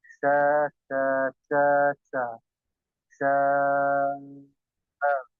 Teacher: Ya, yang afdal, yang utama dipanjangkan 4 harakat. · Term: mad wajib mutasil